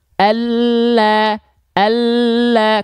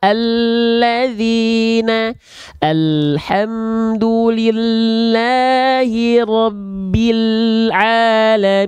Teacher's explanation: tepi lidah tepi lidah itu maksudnya samping lidah atau sisi lidah huruf lam itu dilafalkan dari tepi lidah kita bagian depan yang kanan dan tepi lidah bagian depan kita yang kiri keduanya menyusur sampai ke ujung lidah disentuhkan ke langit-langit di atasnya